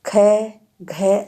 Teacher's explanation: ख, घ आदि के उच्चारण में सांस की मात्रा अधिक लगानी पड़ती है, इसलिए इन्हें महाप्राण व्यंजन कहते हैं।